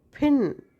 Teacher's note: right so pin is aspirated